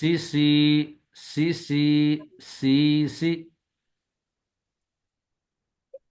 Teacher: سین پہ سیٹی سی کی سی آواز